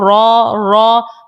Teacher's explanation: رو کا مخرج ہے کہ پشت لسان جب مقابل کے تالو سے لگے تو رو ادا ہوتا ہے